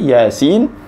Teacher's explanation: Ya itu baca dengan 2 harakat. Kemudian sinnya yang dipanjangkan. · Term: mad asli harfi